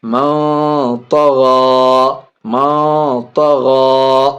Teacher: نون ساکن کے بعد طا حرف اخفا میں سے، ناک میں آواز چھپا کے پڑھیں گے